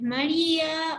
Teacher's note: Aquí cuando la vocal débil, en este caso la I y la U, llevan tilde, se rompe esa unión que había de diptongo y se convierte, la palabra se separan en sílabas distintas